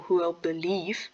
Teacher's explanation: For example, who will believe, the stress is on the leave. You wouldn't say be leave.